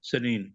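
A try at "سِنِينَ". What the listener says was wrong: جی سنین نہیں ہے، سین کے نیچے زیر سینین جی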